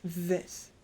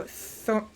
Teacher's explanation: the TH in this, for me at least, it vibrates more, whereas the TH in thorn is more breathy